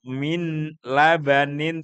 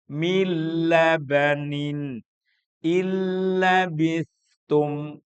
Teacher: Mestinya kan kalau baca min labanin tapi karena bertemu dengan lam maka nunnya masuk kepada lam dan hilang. Namanya idgham itu memang memasukkan huruf nun kepada setelahnya dalam hal ini huruf lam tanpa ada sengau. Maka hilang.